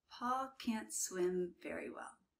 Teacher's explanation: you almost don't hear the T, so it sounds like can, but it's can't.